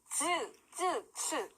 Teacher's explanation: 센 입천장에서 나는 소리 츠 이 소리입니다. 센 입천장 소리 약간 마찰되면서 파열되면서 파찰음인 거죠.